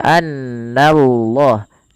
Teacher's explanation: Na tipis Allahnya baru ditebalkan di sini kita namakan dengan Lam tafkhim